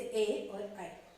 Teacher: ठीक है, उसके बाद देखेंगे कंठ और तालव्य वर्ण। मतलब कंठ और तालु को स्पर्श करते हुए जब प्राण वायु बाहर निकलती है तो इन वर्णों का उच्चारण होता है